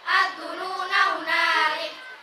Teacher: Ad-dununa jika waqafnya tetap dibaca panjang. Ad-dununa jika wasal dibaca pendek